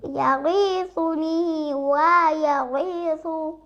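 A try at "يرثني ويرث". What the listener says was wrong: ইয়া ইয়া একটা টান হয় কেন? ইয়ারিসুনি বা ইয়ারিসু এরকম করে বলতে পারো না? ইয়ারিসুনি।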